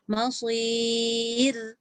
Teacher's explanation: Kenapa ra nipis? Sebab sebelum dia ya mat.